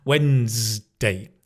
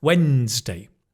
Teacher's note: we kind of drop the D sound and then the N-E-S becomes Ns. Wednesday. And it's a Z, not a S.